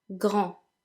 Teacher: the D, being as it's the final letter and is a consonant, is silent